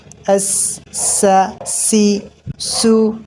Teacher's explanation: سین کو باریک اور سیٹی کے ساتھ پڑھا جاتا ہے